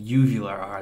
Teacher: this is sort of the hanging ball in the back of your mouth is vibrating